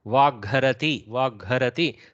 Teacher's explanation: Instead of Hakara, you have the Mahaprana Ghakara only coming into picture. The fourth, so third column influences the Hakara to switch to fourth column of the same Varga.